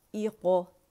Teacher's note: اقرأ موٹا پڑھا جائے گا اور قلقلہ موٹا ہوگا، حمزۃ الوصل کے نیچے زیر آئے گی۔